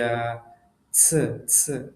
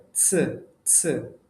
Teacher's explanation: এটার উচ্চারণও হচ্ছে আপনার ওই ছ, ছ, মানে সম্পূর্ণ মাড়ির হচ্ছে উপরের দাঁতের মাড়ির সাথে না, একটু নিচে থেকে আরকি জিহ্বাটা লেগে যাবে।